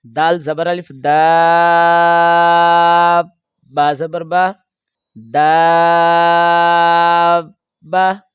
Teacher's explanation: دال کو آپ کھینچیں گے 3 سے 4 الف کے برابر، اس کے بعد با پر رکیں گے، سانس اور آواز نہیں توڑیں گے، اس کے بعد با کے اوپر زبر پڑھیں گے، اور تاکہ نیچے جو 2 زیر ہیں تنوین کی جو حرکت ہے اس کو پڑھیں گے۔